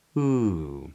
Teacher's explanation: It's a downward glide in the voice. So a rising inflection is ooh, and a downward or falling inflection or falling intonation is ooh.